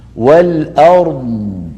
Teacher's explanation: هل سمعتم صوت الضاد كيف هو ممتد رخوا